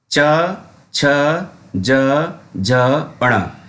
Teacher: और इनका उच्चारण स्थान है तालु। तालु मतलब जीभ के ऊपर जो हिस्सा होता है, तलवा हमारा, उसको टच करके बोला जाता है